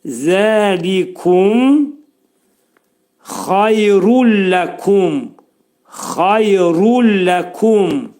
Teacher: Xay dedikdə xayr, burada yənin üstündə 2 saniyə qalırıq